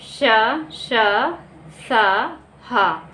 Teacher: इनका उच्चारण रगड़ या घर्षण से उत्पन्न ऊष्म प्राणवायु से होता है। ऊष्म प्राणवायु यानी गर्म हवा, मुंह से इनके बोलने में घर्षण भी होता है, थोड़ा गर्म हवा भी निकलती है मुंह से, और तभी इनको ऊष्म व्यंजन का नाम दिया गया है।